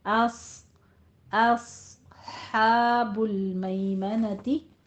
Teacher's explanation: अस में आपने अ हमज़ा की आवाज़ बारीक रखनी है, सौत को पुर करना है।